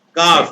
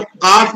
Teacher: زبان کی جڑ کو تھوڑا سا ہٹ کے نیچے کر دیں گے کاف نکلے گا اوپر ملائیں گے تو قاف نکلے گا